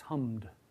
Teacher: although we spell it with an E before the D, if you say it, I think there's only one vowel in that word.